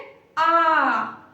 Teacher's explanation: विवृत स्वर क्या होता है, जिसको बोलने में पूरा मुंह है जो खुल जाए, जैसे आ, पूरा मुंह का जो पूरा भाग है वो खुल जाता है विवृत स्वर को बोलने में।